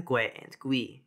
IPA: gwe and gwi